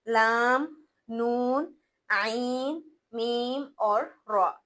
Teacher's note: इसमें क्या होता है, इसमें दोनों सिफात पाई जाती हैं, शिद्दत भी पाई जाती है और रखावत भी, या ये दोनों सिफात के दरमियान पड़ा जाता है। यानी इसमें ना तो आवाज बिल्कुल रुकती है और ना ही बिल्कुल बहती है, ये दरमियान के हरूफ हैं, लाम, नून, आइन, मीम और रा। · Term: तवस्सुत